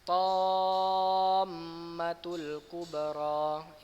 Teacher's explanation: Ingat mimnya agak ditekan karena ada tasydidnya ya.